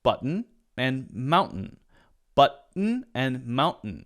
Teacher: Americans May often skip the T the T sound for example in Mountain after the n and skip the T sound in the middle by saying button · That's the stop T. The voice goes, huh, like that, cuts off, and then it continues. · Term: stop in the voice